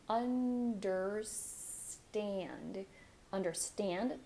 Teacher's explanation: For understand, you're going to start with the as in animal, like Portuguese vowel sound. Bring your tongue up for the N. · Last syllable is stressed.